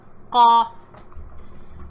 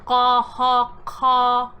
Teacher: the middle back of your tongue is touching the furthest back part of your throat to make the ga sound. And it's a quick touch and release.